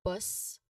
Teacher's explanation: So here you of course you ensure that you pronounce the final S of the first word so that it can sound distinctly. So bus you make sure there's really a hissing sound there